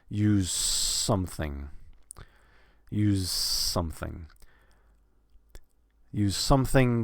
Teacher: The S is going to kind of, you're not really going to hear much of a Z because the S is going to kind of absorb the Z